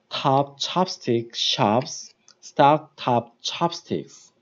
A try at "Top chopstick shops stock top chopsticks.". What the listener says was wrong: Okay, it's good, but drop your jaw more.